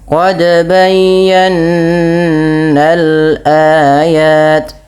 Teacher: kita harus menyempurnakan gunahnya, yaitu bunyi suara nun yang ditahan